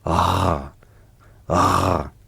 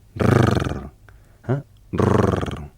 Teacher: Le R français se prononce en faisant vibrer le dos de la langue contre le palais. Rrr, rrr, vous le sentez contre le palais.